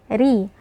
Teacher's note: Ra di sini karena kasrah dia tipis.